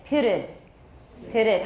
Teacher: it ends with a T. So we add another syllable. We put a schwa in there.